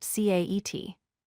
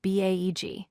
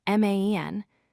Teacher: Notice how the short A sound is quick and crisp in each of these words. It does not stretch or extend like other vowel sounds. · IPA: /æ/